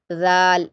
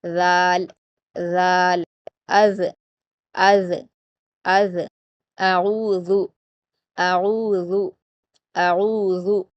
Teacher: اوپر کے 2 دانتوں کے کناروں سے آپ کی زبان کی نوک ملے گی اور تھوڑی سی باہر دکھائی دے گی زبان کی نوک